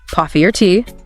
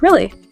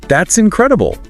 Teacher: Rising falling intonation your voice goes up and then back down